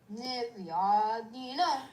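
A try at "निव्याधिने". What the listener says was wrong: Now, how much time are you taking? How much time are you taking for Niv and Ya? Same timing has to be repeated. Nivyadhina.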